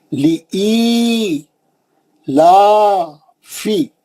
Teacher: آپ دیکھ رہے ہیں دو زیر ہیں وہاں پہ, ایک لام پہ ایک الف پہ. اور الف کے زیر کے بعد یا ساکن آ گئی, مد اصلی ہو گیا, دو حرکت ہو گیا. لی ای لا فی, لا پہ کھڑا زبر ہے.